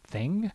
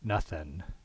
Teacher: a stressed syllable like the word thing, where you'd get a velar nasal, and nothing, where you'd get an alveolar nasal because it's an unstressed syllable